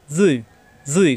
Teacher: জুই জিব্বার আগা দাঁতের আগায়, জুই, জুই কিন্তু মোটা হবে, জুই, মুখ গোল হবে না